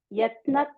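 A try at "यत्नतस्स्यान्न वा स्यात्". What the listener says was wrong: Yat natas. That's one word. Yeah, yat natas is one word. Yat natas.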